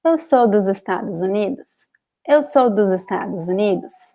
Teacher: usually we connect the S with the vowel. When the S is between two vowels, it sounds a little bit like Z.